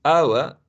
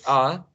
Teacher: some speakers smoothed, right, the combination of three sounds, and basically the middle one is softened. It almost disappears, right? So the u, the e, right, may disappear for some speakers, right?